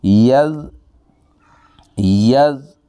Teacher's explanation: یز، یز، یہ زال ہے، اس کا مخرج ہے زبان کے آگے والا کنارہ اوپر کے دانتوں کے ساتھ لگانا ہے، سیٹی کی آواز نہ آئے۔